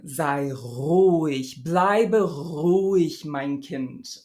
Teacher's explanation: I used this uvular trill instead of the more standard fricative. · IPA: [ʀ]